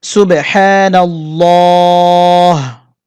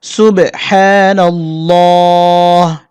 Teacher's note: এখানে নাল্লাহ বলতে হবে, মোটা করে উচ্চারণ করতে হবে